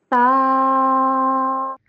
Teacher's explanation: ہم نے تا کو بھی ایک الف جتنا لمبا کر کے پڑھنا ہے